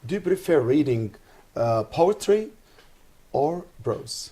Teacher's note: When presenting option, the speaker voice rises on the first choice and fall on the last choice. This pattern helps to differentiate between the option being presented and signal to the listener that a selection is expected. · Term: rising intonation